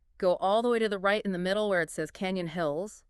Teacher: This is the habit of ending a declarative statement with an upward inflection, making it sound like a question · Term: uptalk